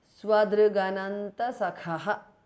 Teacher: K changes to g because of sandhi